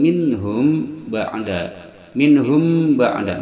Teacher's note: masuk ke mim dengan dengungan dua harakat inhum ba'da minhum ba'da mim mati bertemu ba Ini adalah Ikhfa Syafawi dia disamarkan dua harakat